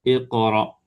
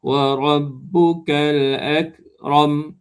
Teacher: sifat qaf ni dia tebal. Kaf ni dia nipis.